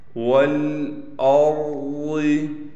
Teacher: واو کو لام سے ملائیں گے، اس حمزہ کو بھی اس را سے ملائیں گے، را موٹا پڑھا جائے گا، ضاد بھی موٹا پڑھا جائے گا۔